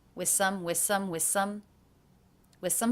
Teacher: i took this function word which will not be stressed it is less important in the sentence and I dropped the final sound